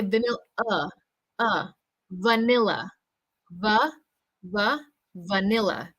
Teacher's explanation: so that final vowel sound will be the schwa sound